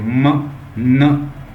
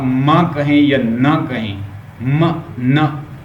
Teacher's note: तो ऐसे फील होगा जैसे मेरी नाक से साउंड आ रही है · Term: नेजल साउंड